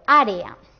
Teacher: En la palabra área también tenemos dos vocales fuertes, en este caso no están repetidas, es una E y una A. Así que al pronunciarla las separaríamos porque formarían un hiato